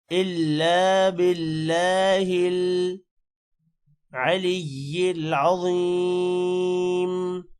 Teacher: ولا قوت الا باللہ، الا، لام کے بعد الف ہے، تھوڑا سا لمبا ہوگا، باللہ، اللہ کے نام کو یہاں پر موٹا نہیں کرنا کیونکہ اللہ کے نام سے پہلے زیر آ رہی ہے، اور زیر کی وجہ سے اللہ کا نام موٹا نہیں ہوگا۔